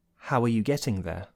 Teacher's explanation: There's a beat on the word how, do you hear that?